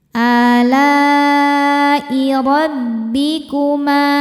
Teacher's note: ro dibaca tafkhim karena berharokat fathah. Cara bacanya ditebalkan. Rabbikuma, ma hukumnya mad tabi'i dhahiri karena ada alif didahului harokat fathah.